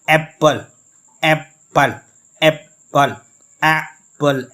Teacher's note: ए को हम स्ट्रेस देकर पढ़ रहे हैं और स्ट्रांग मजबूत पढ़ रहे हैं और हायर पढ़ रहे हैं, लाउडर पढ़ रहे हैं और लॉन्गर पढ़ रहे हैं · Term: स्ट्रेस सेलेबल